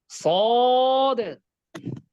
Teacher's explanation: জিহ্বার আগা সামনের নিচের দুই দাঁতের পেট ও আগার সাথে লাগবে। দেখেন, জিহ্বার আগা সামনের নিচের দুই দাঁতের পেট ও আগার সাথে, জিহ্বার আগাটা একটু নিচে পড়ে আছে, আর একটু উপরে উঠবে।